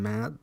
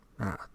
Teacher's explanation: The so-called soft D of Danish, as in mad, food, is a dental approximant.